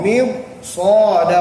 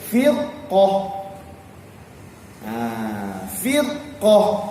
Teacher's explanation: Selepas ra itu ada huruf isti'la, sebelumnya ada huruf yang berbaris kasrah, maka ra itu perlu ditebalkan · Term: tebalkan ra